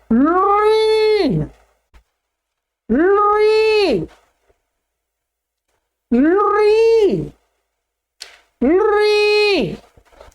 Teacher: इसका दीर्घ नहीं होता है, इसका प्लुत होता है।